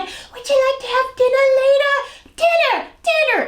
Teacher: she has this very breathy kind of baby doll voice